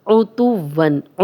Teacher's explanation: عُتُوًّا، عُ عین پہ پیش ہے، تو تا کی پیش واو سے ملے گی کیونکہ واو پہ شد ہے، شد والا حرف 2 بار پڑھا جاتا ہے